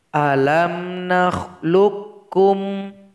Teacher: karena disambut oleh huruf yang bertasydid qalqalahnya menjadi hilang